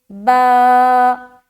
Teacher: با الف خالی سے پہلے زبر ہے، الف مدہ ہوگا. الف مدہ کو ایک الف کے برابر کھینچ کر پڑھیں گے